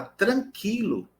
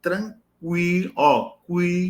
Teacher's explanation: um exemplo quando a pessoa fala tranquilo não tá labial mas quando eu digo tranquilo ó cu eu arredondo o Lábio